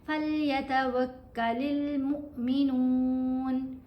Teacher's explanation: نون کو ہم نے لمبا کرنا ہے کیونکہ پیش کے ساتھ واو ساکن حرف مدہ ہے